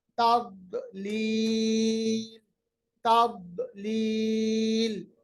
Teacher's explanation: داد پہ استطالہ یعنی اس کی آواز کو ہم نے لمبا کیا ، تضلیل، تضلیل، ٹھہرنے کی صورت میں لام کو ساکن بنائیں